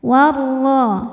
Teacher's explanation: ro-nya dibunyikan secara tafkhim karena berharokat fathah, maka dibaca tebal